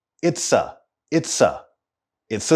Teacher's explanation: if you listen carefully you'll hear a linking between the two words it's and a